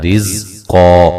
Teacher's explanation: اچھا جی، عین، نون ساکن کا یہاں اخفا ہے باریک، دا، ہا الف مدہ ہے، رزقا، را کو باریک پڑھیں گے اور زا کو ہلانا نہیں ہے